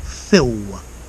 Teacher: L at the end of the words goes to w. So fill. Enough.